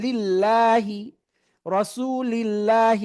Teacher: আল্লাহ শব্দ মাঝে লামের আগে জের তাহলে এটাও পাতলা পড়বেন